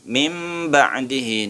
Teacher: Suara nun mati dibalik menjadi mim sehingga menjadi mim ba'di. Nunnya menjadi mim. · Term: Iklab